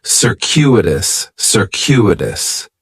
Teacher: The stress is going to be on that second syllable, and that CU is kind of like you're saying the letter Q, circuitous, circuitous.